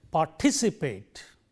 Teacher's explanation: The third syllable from the end gets the stress.